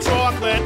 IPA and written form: ˈtʃɔə klɪt (chocolate)